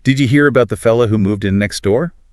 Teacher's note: that characteristic upward inflection at the end of sentences, even when it's not a question